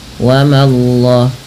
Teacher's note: Allahnya tebal tapi mamanya tipis